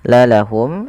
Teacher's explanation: menjelaskan suara mimnya tanpa ada penahanan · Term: izhar syafawi